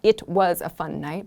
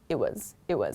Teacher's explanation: these kinds of Expressions just become much much faster and shorter and we don't pronounce the T very clearly